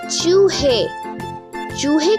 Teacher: میں ہوں یہ اور میں لفظ کے آخر میں اپنی پوری آواز اے دیتا ہوں، جیسے چوہے کو بولتے ہوئے آخر میں آواز اے آتی ہے جو حلق سے نکلتی ہے اور اس میں کوئی رکاوٹ نہیں ہوتی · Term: بڑی یہ